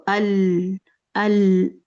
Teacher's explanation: लाम उन हरूफ में से है जिनकी आवाज़ जब ये साकिन होते हैं तो ना तो बहुत ज़्यादा लंबी चलती है और ना ही एकदम से रुकती है